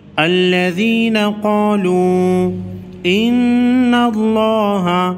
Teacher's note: نون مشدد پر غنہ ہوگا، لفظ اللہ کے لام کو موٹا پڑھیں گے اس لیے کہ نون اس سے پہلے حرف نون پر زبر ہے۔